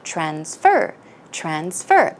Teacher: it is a verb in this case, so the stress would go on the second syllable.